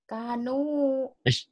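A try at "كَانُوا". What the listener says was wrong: Kan kayak ini ada alifnya. Kalau kap gini nih kayak gini ada alifnya. Kaanu. Kaanu.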